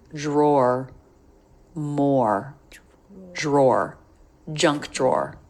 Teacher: It's just the R consonant. So you can treat this drawer just like the word more, which is just 1 syllable, but it's aw followed by R.